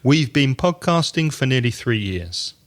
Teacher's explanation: not stressing the word for